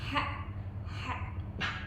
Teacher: Istiffal ya. Lidahnya rileks, suaranya tipis.